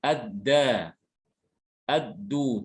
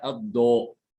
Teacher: ketika mengucapkan dal, pangkal lidah tidak naik ke atas, ya. Dia biasa saja, ya. Sehingga suara yang dihasilkan tipis.